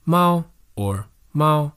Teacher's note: The first tone is very high, but everyone has a different voice pitch or a different accent, so it might sound different for some people.